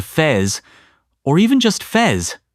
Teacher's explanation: The face vowel flattens out sometimes closer to fez, or even just fez. It's less of a diphthong, more of a smooth glide.